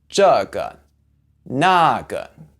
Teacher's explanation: The first one is that 个, which means one of something, is usually pronounced with a fourth tone, but in these words, you can say it with a neutral tone